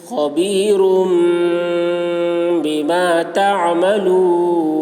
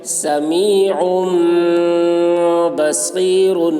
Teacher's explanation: تنوین کو میم سے بدل کر غنہ اور اخفا کے ساتھ پڑھیں گے. اس کو اقلاب کہتے ہیں.